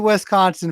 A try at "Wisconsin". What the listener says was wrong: Well, it's close. There's no E in the beginning of it, but that's okay. Wisconsin. Wisconsin.